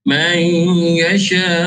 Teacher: Mayasha, idgham ma'al gunnah dengung dua harakat. Yasha, mak asli berjumpa dengan huruf hamzah, dinamakan sebagai mak wajib mutasil panjang 4 atau 5 harakat